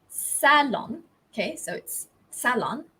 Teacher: the stress is on the first syllable and in american english this stress falls on the second syllable